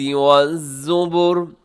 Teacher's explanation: والزبری کو زبرے نہیں پڑھنا اپنے، را باریک ہوتی ہے